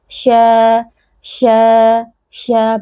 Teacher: Kemudian kita menyebarkan angin di dalam mulut kita karena huruf shin punya sifat tafasyi, ya, angin yang menyebar di dalam mulut kita. Sya, bagian tengah lidah naik, kemudian menyebar angin.